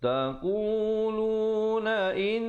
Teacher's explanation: di situ didengungkan dua harakat wajibul gunnah